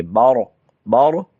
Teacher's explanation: با کے بعد را کو پر کریں گے، برق نہیں پڑھیں گے، بارق، بارق.